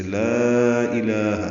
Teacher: لا الہ الا ہو، دیکھیں جیسے کلمے میں الفاظ ہم لام کو لمبا کرتے ہیں، یہ مد منفصل ہے، الف مدہ کے بعد حمزہ آنے کی وجہ سے. لا الہ، الہ میں لام کو 2 حرکات لمبا کرنا ہے